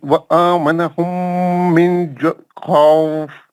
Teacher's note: نون کا غنہ نہیں کریں گے، نون مشدد نہیں ہے نا. آپ نون کا غنہ بھی کر دیا نا، نون مشدد نہیں ہے نا، نون تو خالی جزم ہے نا.